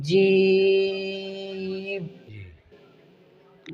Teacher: جیم کو ادا کرتے وقت ناک سے نہ نکالیں، بلکہ جیم کے درمیان میں یا ہے اور یا کا مخرج وسط زبان اس کے مقابل اوپر کا تالو ہے، ناک سے اس کو نہ ادا کرو۔